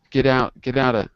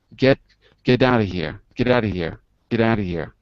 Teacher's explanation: T's become D's, and they move to the next word